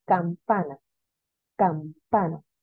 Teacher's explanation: campana tiene el acento en las penúltimas sílabas pero termina la palabra no la sílaba la palabra en vocal